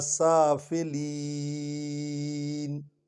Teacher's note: آخر میں جو یہ یا ہوتی ہے اور آیت ختم ہو رہی ہو تو یہ یالین ہوتی ہے، اس کو آپ لمبا کر کے پڑھ سکتے ہیں